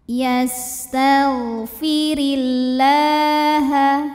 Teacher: Sin punya sifat yang tidak memiliki lawan namanya shofir artinya berdesis seperti suara ular yastagfirillaha kemudian huruf ro dibunyikan secara tarqq sebabnya berbaris di bawah